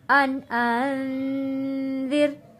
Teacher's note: یہاں پہ نون ساکن پہ غنہ ادا کریں گے کیونکہ اگلا لفظ حروف ہلکی نہیں ہے